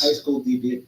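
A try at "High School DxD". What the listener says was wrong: you don't pronounce the X. You don't pronounce the X. The X is silent. The X is silent.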